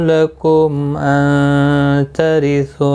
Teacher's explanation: میم ساکن کے بعد حمزہ آیا ہے، اظہار شفوی ہوگا۔